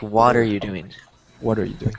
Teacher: what they're doing is they're attaching these two words what and are